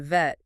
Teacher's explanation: Your top teeth have to gently touch the inner side of your bottom lip, and it's voiced. You have to feel the buzz from the vocal cords. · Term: V sound